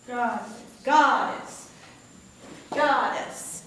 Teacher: God gets the emphasis